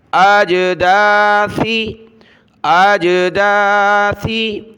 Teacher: سیٹی کی آواز نہیں آنی چاہیے